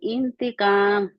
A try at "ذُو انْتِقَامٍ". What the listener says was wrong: انتقام کیوں کہتے ہیں آپ ذو انتقام ہے